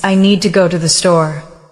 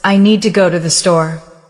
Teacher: The important words are need, go, and store. The rest are said more softly. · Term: stress pattern